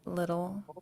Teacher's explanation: when you say little in English it's written ttle e but we pronounce it like a d · in English, it's written TTLE, but we pronounce it like a D, little. And it's like really hard to tell the difference anyway.